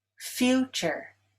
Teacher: Future is stressed on the first syllable.